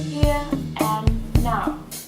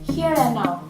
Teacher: If we pronounce the two words separately, we don't pronounce the R sound, but if we connect them together, we pronounce the R sound because it is easier to pronounce it that way. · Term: linking R